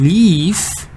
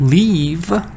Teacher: in leaves this vowel is really long leave but in the word leave it's a little bit shorter